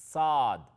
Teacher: سواد میں واو کی آواز نہیں ہے، ساد الف دال ہے